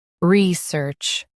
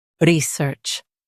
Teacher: U.S. stresses R-E-E. UK stresses search.